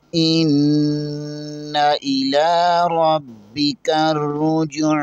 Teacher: عین کے اوپر کھڑی زبر ہے اسے ایک الف کے برابر کھینچیں گے